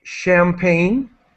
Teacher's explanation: sometimes with the words borrowed from French we use the sh sound like champagne